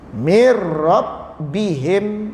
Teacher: Ini idgham bila gunnah. Tidak ada dengung. Masukkan saja, dengungnya tidak ada.